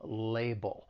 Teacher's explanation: the second syllable it ends with that dark L which is that all sound · the word has two syllables the stress is on that first syllable · the 2nd syllable, it ends with that dark L, which is that ul sound. And then if we're following it with the word as, I told you that's a common phrase, well then we can link that dark L with the beginning vowel sound in as. · the word has 2 syllables. The stress is on that 1st syllable, label. The other thing I'd like to point out is the 2nd syllable, it ends with that dark L, which is that ul sound.